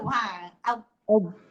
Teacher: dia punya lidah menyentuh bahagian pipi kiri ataupun pipi kanan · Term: huruf dot